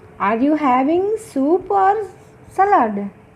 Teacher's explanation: అలా చాయిస్ అడిగేటప్పుడు first rising intonation వాడతాము, నెక్స్ట్ ఫాలింగ్ ఇంటోనేషన్ వాడతాము. · Rising falling intonation. Rise fall intonation, the intonation rises and then falls. అక్కడ marking ఏం పెడుతున్నాం చూడండి, ఫస్ట్ రైజ్ అవుతుంది, తర్వాత మళ్ళీ ఫాలింగ్ టోన్ వస్తుంది. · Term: రైజ్ ఫాల్ ఇంటోనేషన్